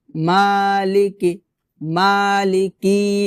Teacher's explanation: রাহিম তারপর মালিকি মালিকি এখানে মালিকি এভাবে ভাবে হবে না। অর্থাৎ মাতে একলিফ টান হবে। তবে লামজের কাফজের কি এগুলোতে টান হবে না